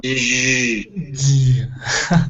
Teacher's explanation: the J sound, you could also think of as a D plus a ZH.